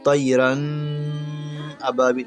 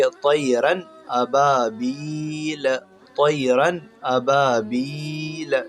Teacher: यानी यहाँ पर बग़ैर गुन्ना के जल्दी पढ़ेंगे